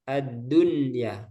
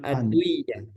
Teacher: dia dibaca jelas nunnya bukan dileburkan